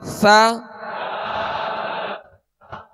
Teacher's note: اور مخارج کی لسٹ میں جب سا یا مخرج آپ دیکھیں گے تو اس کی ادائیگی جو ہے زبان کا سرا اور اوپر کے جو سامنے والے 2 دانت ہیں اس کے اندرونی کنارے سے لگے تو سا ادا ہوتا ہے، اور نرمی سے اس کو ادا کرنا ہے۔